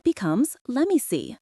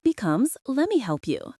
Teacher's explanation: This comes from let me. The T in let is stopped. We don't release the air. And then the M takes over. So let me becomes lemme.